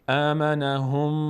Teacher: نون تشدید داره، میم تشدید داره، مقدار در هنگام تلفظشون صدا رو به بینی میاندازیم و توقف میکنیم، اینو بهش میگیم غنه.